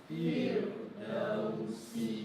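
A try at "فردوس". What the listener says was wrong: Okay, because we tend to automatically lighten the sound of huruf ra when we say firdaus. Okay, so firdausi. And when you pronounce, feel the tongue. What's the gesture that you are producing? And you lift the tongue, and the tongue is maintained flat. It is, and also teeth, front teeth, upper teeth. Your tongue is very close.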